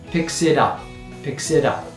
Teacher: The t often becomes softened to a D sound